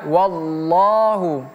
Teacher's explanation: Wallahu tebal di sini. Allah itu huruf tebal.